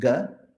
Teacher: If you do a soft unaspirated coming from the throat, it's ga.